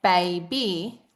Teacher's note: when we say baby, we're bringing our lips together, producing a bilabial.